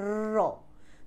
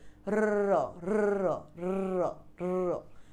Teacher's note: জীব একাধিকবার অতি দ্রুত দন্তমূলকে আঘাত করে, একাধিকবার অতি দ্রুত, র র র র, এরকম করে বলে দেখো। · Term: কম্পিত ব্যঞ্জন